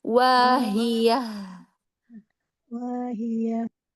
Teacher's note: Iya, alirkan lagi rokhwa dan hamasnya